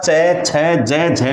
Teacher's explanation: च छ ज झ में एक ही स्थान पर जीव का स्पर्श होता है और वही स्थान है तालू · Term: तालव्य